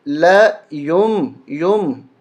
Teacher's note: نون ساکن کے بعد اگر با آ جائے تو اس نون کو میم بنا دیا جاتا ہے، میم کے ساتھ پڑھا جاتا ہے. تو ہم پڑھیں گے ل یم یم، نون کی آواز نہیں آئے گی، یا ملے گا چھوٹی میم کے ساتھ.